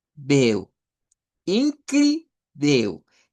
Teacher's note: En la cri hay que poner la fuerza de voz.